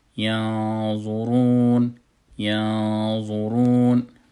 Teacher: میبینید که نون یک اندازه میغونش پر میشه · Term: غنه پر